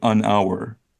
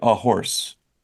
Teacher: So hour is a silent H. So we say an hour. But horse, we actually pronounce the H sound.